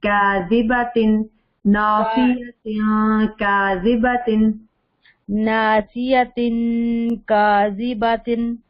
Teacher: बा को लंबा नहीं करना, क्योंकि बा के ऊपर सिर्फ जबर है ना, खड़ी जबर नहीं।